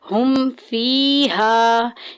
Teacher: فا جو ہے وہ اظہار شفی کے قواعد میں سے ہے، ہم نے ظاہر کر کے پڑھنا ہے۔ ہم فیہا، ہم میں غنہ نہیں کرنا